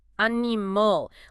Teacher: Because A-N steals 100% of the vocal energy, the rest of the word is starved. The I and the final A get completely squashed. They both collapse into schwas. We do not say animal, we say animal.